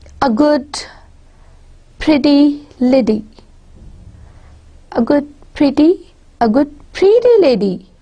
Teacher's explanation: Pretty, you are emphasizing pretty. It's, the emphasis is not on lady, it's on her being more pretty.